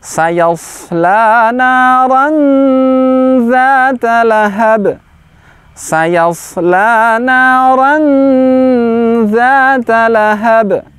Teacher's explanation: Yang perlu diperhatikan adalah pengucapan huruf shad. Shad, huruf tebal. Sa, huruf tipis. Sayasla, pangkal lidah diangkat.